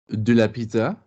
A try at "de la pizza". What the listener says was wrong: Now, can you clean up your damn vowel act on de la? De la pizza. Notice you are being pulled into the dark hole of de le. De le exists in French, but not here.